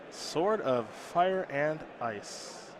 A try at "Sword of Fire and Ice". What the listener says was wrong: Oh, we don't pronounce the W?